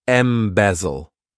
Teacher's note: this verb has three syllables and the stress is on that second syllable M bezel what it means is to take